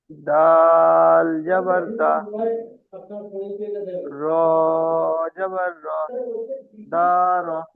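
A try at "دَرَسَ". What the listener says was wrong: দা টান হয়ে যাচ্ছে, দার।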